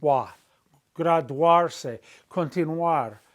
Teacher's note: the U and the A are two vowels together making one sound, a diphthong